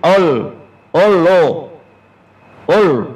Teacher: Tasydid taghlis. Taghlis apa taghlis? Tebal. Lam sifatnya taghlis.